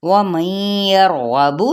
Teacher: गैन को पुर पढ़ेंगे, हरूफ मुस्तआलिया में से है